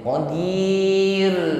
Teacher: Sukun dan sebelumnya ada kasrah maka di sini rnya dibaca tqik digetarkan dengan getaran yang tipis atau ringan